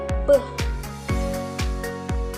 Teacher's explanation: Contohnya salah satunya yaitu ada bunyi bilabial, yaitu bunyi yang dihasilkan dengan di antara 2 bibir